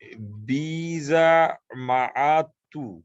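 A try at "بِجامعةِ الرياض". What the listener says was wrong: এই জায়গায় দেখো বিজা বললে হবে না, কিন্তু এটা বি হচ্ছে প্রিপজিশনের বি, বিজা বললে হবে না। এটা হচ্ছে বি জামিয়াতে, দুইটা কিন্তু আলাদা শব্দ। বিজামিয়াতে, হ্যাঁ, বিজা তাহলে হয়ে যাবে, ধরো আমরা ভাত খাই, এটা হয়ে যাবে আম রাভা তখাই, এরকম শোনা যাবে বিজা যদি বলো। জামিয়াতি হচ্ছে, জামিয়াতুন হচ্ছে ইউনিভার্সিটি, এই জন্য ওই বি এর সাথে বিজা আলাদা বলা যাবে না।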